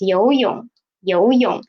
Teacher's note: the second one is 泳, third tone. What should we do? We will read it as half the tone